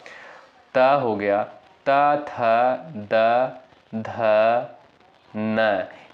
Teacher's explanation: जिनका उच्चारण ऊपर के दांतों पर जीभ लगने से होता है, उन्हें दंत उच्चारित वर्ड कहते हैं